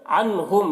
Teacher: عنہم، یہاں پر نون ساکن کے بعد ہا ہے حروف حلقے میں سے، یہاں پر اظہار ہوگا، نون کو ظاہر کر کے جلد پڑھیں گے. اموالہم ولا، یہاں پر میم ساکن کے بعد اور یہاں پر بھی میم ساکن کے بعد واو ہے، یہاں پر بھی میم ساکن کے بعد واو ہے، تو یہاں پر اظہار شفوی ہوگا، میم کو ظاہر کر کے جلد پڑھیں گے جیسے ہم تم کی میم کو پڑھتے ہیں.